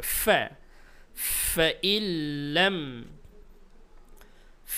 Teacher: ফা উচ্চারণের সময় একটু বাতাস বের হবে।